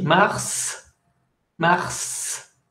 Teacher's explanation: Exception, le S de mars se prononce